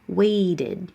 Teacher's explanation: that middle T is going to change to a D now